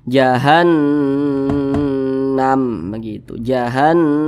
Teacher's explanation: Di belakangnya ada huruf yang memiliki tanda baca fathah, berarti nun bertasydidnya ini hukumnya gunnah musyaddadah. Nah, cara membacanya itu digunnahkan tuh didengungkan. Jadi suaranya itu kita tahan, kita panjangkan sejenak.